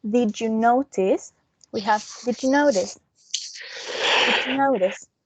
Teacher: when it's a d followed by a j, we have j.